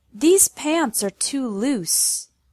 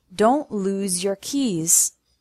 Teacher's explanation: loose with an S sound these pants are too loose lose with the Z sound